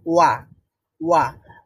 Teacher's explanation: ঠোঁটকে প্রথমেই হচ্ছে একটু গোল করে করতে হয় তারপরে একটু আস্তে আস্তে প্রসারিত করতে হয় ওয়া মানে ভিতর থেকে সাউন্ডও প্রডিউস হবে এবং আমার ঠোঁটটা ছোট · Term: ওয়াও